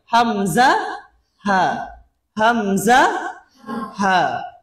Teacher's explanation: তাহলে আকাসাই হালক বলতে বোঝাচ্ছে কণ্ঠনালীর ওই অংশ যেটা সিনার দিকে, সেখান থেকে 2টি হরফ উচ্চারিত হয়